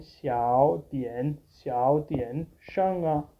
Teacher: Here, this in speaking, this xiao will become xiao dian sheng. Xiao is having a second tone, a rising tone in speaking